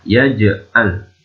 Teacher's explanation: Yaj memantul. Ini adalah qalqalah.